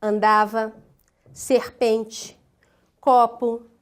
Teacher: Paroxítonas, aquelas que têm a sílaba tônica na penúltima sílaba